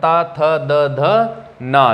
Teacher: ये दांत से बोले जाते हैं। जीभ हमारी जो है दांतों को स्पर्श करती है, इसीलिए हम इन्हें दंत्य कहते हैं।